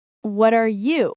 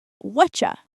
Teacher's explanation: Notice how native speakers link words together like what are you becomes whatcha.